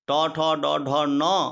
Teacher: टवर्ग ट ठ ड ढ न और रकार सकार का उच्चारण स्थान क्या है, मूर्धा है